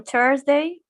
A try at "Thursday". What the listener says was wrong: Just a little bit more Thursday. There was a little bit too much T. Thursday.